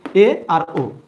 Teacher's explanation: অর্ধ সংবৃত্ত বা উচ্চ মধ্য স্বরধ্বনি হলো এ আর ও